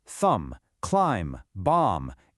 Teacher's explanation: Our first one is the MB combination. The rule, if a word ends in MB, that B goes completely silent. It's like a little whisper you just don't hear.